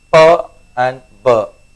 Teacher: the sounds which are produced with the lips the two lips you know must touch with each other to produce the sound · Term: bilabials